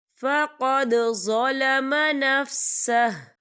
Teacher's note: وَمَن يَفْعَلْ ذَلِكَ فَقَدْ ظَلَمَ، یا دیکھیں فَقَدْ، دال ساکن ہے، دال پر کلکلہ ہوگا